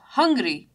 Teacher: in hungry, you have the UNG sound for hungry as the stress in the word. So hungry, you have UNG portion with more stress.